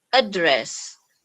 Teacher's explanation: If we want to say as noun, the intonation should be address. So from up going down, and the other way, if we want to say this word as verb, so the intonation should be from down going up.